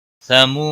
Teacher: واو مدہ ہے، ایک الف کے برابر کھینچ کر پڑھیں گا۔ بطغ غین کے اوپر قلقلہ نہیں ہونا چاہیے، بطغ طا کو بھی موٹا پڑھیں گے اور غین کو بھی موٹا پڑھیں گے۔